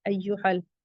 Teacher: یہاں مد منفصل آ رہا ہے تو 4 to 5 کاؤنٹ elongate کریں گے